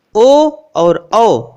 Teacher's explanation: ओ दौतोह कंठोष्ठम, ओ और औ इन दोनों वर्णों का कंठ और ओष्ठ उच्चारण स्थान होता है